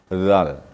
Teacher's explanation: Kemudian zal, ini ada juga kita seleo ya, masalah zal. Zal bertemu ujung lidah dengan ujung gigi atas. Kemudian gigi ini direnggangkan. Ini keluarlah suara zal.